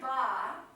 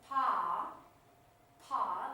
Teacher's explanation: So if you look at these two, so these ba and pa share their articulation because they're both produced with the lips